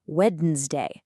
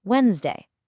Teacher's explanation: That D is totally silent. And that second E? Yeah, it's gone too.